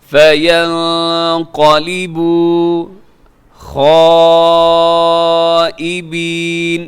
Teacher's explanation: یہاں جو مد ہے اسے مد متصل کہتے ہیں، بڑی مد ہے